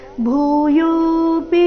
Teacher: ಭೂಯೋ ಎರಡು ದೀರ್ಘ ಪಿ ರಸ್ವ